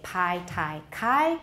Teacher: p t and k if they're the first sound of the syllable they are definitely aspirated